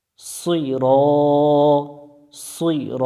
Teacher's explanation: এখানে সি রা বা সি র এভাবে পড়া যাবে না, সুই মোটা করতে হবে।